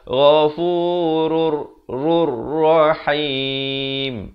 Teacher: hukum idgham bila gunnah. Masuk tanpa dengung. Asalnya ghafurun.